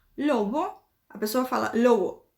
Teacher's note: em espanhol existem algumas pronúncias que vão fazer com que esse B fique diminuído, a força dele. Então, em vez da pessoa falar lobo, a pessoa fala lobo, como se tivesse tentando tirar esse B do meio da palavra, tá?